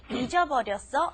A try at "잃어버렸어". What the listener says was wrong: You did two of the same thing there.